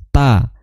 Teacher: Ta makhrajnya adalah di ujung lidah bertemu dengan pangkal gigi dari atas